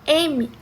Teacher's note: quando a gente fala m a gente vai ter no local de articulação um som bilabial mas a gente vai ter no modo de articulação um som nasal